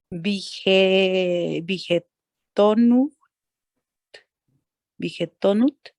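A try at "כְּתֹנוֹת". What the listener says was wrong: Listo, esta Sheva no suena.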